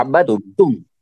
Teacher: دال کو یہاں مدغم کرنا ہے، یعنی ملانا ہے، کس میں؟ تا میں ملانا ہے، عبدتم، ٹھیک ہے، عبدتم۔ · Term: ادغام